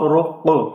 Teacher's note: اب اس میں را اور قاف یہ دونوں پر پڑے جائیں گے اور قاف پہ قلقلے کی آواز ہوگی۔